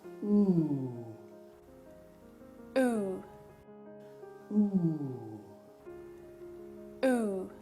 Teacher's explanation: To produce the sound, put your tongue high and at the back of the mouth and lightly push your lips together whilst making a long voiced sound with your mouth closed. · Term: oo sound